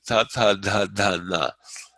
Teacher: The tongue is against the tip of the teeth. That's not typical in American English, at least.